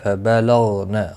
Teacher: غین مستعلیہ ہے، پر پڑھا جائے گا، اس کو ہلانا نہیں